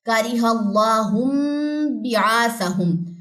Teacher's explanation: نون ساکن کے بعد با آ گیا تو نون کی آواز کو میم سے بدل کے پڑھیں گے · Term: اقلاب